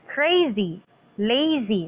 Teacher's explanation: so the second syllable is stressed prepare and despair but here when we say crazy the stress is in the first syllable